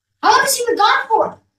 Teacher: la H que está en medio es la que no se va a pronunciar